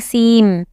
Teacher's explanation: So the noon in seen is totally combined into the meme to make it a tashdeed meme. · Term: idgham